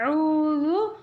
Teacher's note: நுனி நாக்கு நுனி பற்களின் ஓரமாக டச் பண்ணுற மகரஜ் இந்த இடத்துல கவனமாக சொல்லணும்.